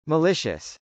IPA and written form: məlˈɪʃəs (malicious)